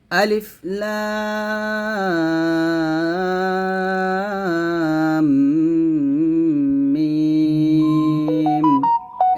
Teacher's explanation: দিব আলিফ লাম মিম এখানে মিমে এসে গুন্না করতে হবে কারণ মিমের উপর তাশরিদীর থাকার কারণে মিমে এসে আমরা গুন্না আদায় করব